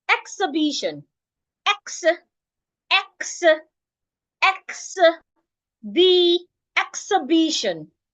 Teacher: Once I get to the second syllable, I bring it down. Once I get to the third syllable, I bring it up. It becomes louder, longer, and clearer than how I started at the beginning. And by the time I get to the last syllable, I take it down again.